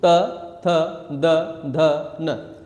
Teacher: हमारी जीभ टच कर रही है हमारे दांतों को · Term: दंत्य